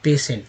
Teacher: टी का उच्चारण श के रूप में हो रहा है